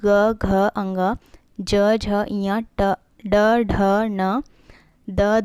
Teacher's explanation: जिन ध्वनि के उच्चारण में स्वर तंत्रियों में कंपन हो, यह कंपन के साथ उच्चारण होती है। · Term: घोष ध्वनि